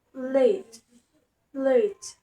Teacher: L is produced at the alveolar place with a lateral approximant manner where the air flows along the sides of the tongue